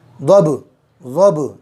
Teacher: ضاد کو پر کرنا، با پر قلقلہ کرنا، ضب ضب، اس طریقے سے۔